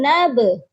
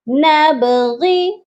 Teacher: نون با زبر نب، با جو ہے حروف قلقلہ ہے اور یہاں پر یہ ساکن ہے تو یہاں پر قلقلہ لازمی کریے گا، غائن زیر غی، نبغی۔